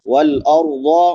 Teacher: ضاد حروف مستعلیہ میں سے ہے، اس کو بھی پر پڑھیں گے۔